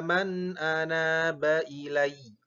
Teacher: Nah, karena ini ada anaba, maka naanya tetap dibaca panjang